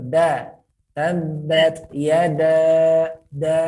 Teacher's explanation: Huruf dal dekat gigi seri bagian atas, bagian tumbuh gigi itu